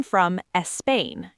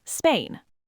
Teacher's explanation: why it's so hard not to add an e sound before words that start with s. For example, saying I am from espain instead of Spain.